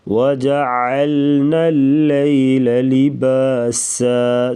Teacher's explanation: سین سیٹی کی آواز نکالیں گے